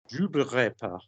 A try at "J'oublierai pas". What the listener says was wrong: J'oublierai. There's an e.